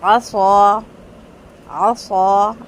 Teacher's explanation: عصا پورے ہونٹ، پورا منہ جو ہے وہ بھر کے صاد ادا ہوا ہے، اور سین بالکل فلیٹ ہے، باریک ہے بالکل